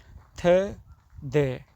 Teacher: it is dental because tip of tongue touch to upper teeth